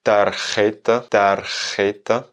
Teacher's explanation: Et la petite particularité de tarjeta, una tarjeta, une carte, en espagnol, c'est qu'il va y avoir le R et le J collés